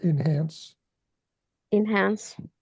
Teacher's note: the word enhance, the emphasis on the second syllable